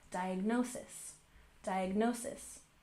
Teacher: We put the main stress on the third syllable